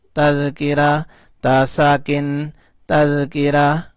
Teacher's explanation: گول والا تا جب ساکن کرتے ہیں یعنی وقف کرتے ہیں تو یہ ہا بن جاتا ہے